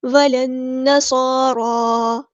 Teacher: ولن نصارا، لام کو ہم نے نون کے ساتھ ملا دینا ہے، حمزۃ الوصل ہمارا ڈراپ ہو جائے گا، اور نون جو ہے وہ یہاں پر تشدید والا ہے تو غنہ زمانی کریں گے، اور لام یہاں پر لام شمسی ہے، اس کو ہم ظاہر نہیں پڑھیں گے